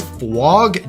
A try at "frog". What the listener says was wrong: See, look, you're saying it fwog, but you gotta say frog.